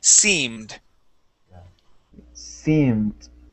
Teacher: And now the double E, in most cases in English, that double E makes a long E sound. So instead of saying simmed, it is seemed.